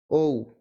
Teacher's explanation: অ plus উ যুক্ত হয়ে ঔ হয়েছে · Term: যৌগিক স্বরধ্বনি